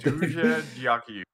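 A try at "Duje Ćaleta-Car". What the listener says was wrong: No. Duje Dakuyu. Yeah, almost pretty close, but not dia, but ja.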